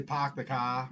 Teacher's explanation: Doesn't sound the same, but it's got a similar lack of pronouncing the R. That's called non-rhotic, when you don't really pronounce the R in situations where you normally might.